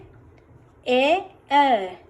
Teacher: ए तो उसके लिए तालु और कंठ दोनों का उपयोग होता है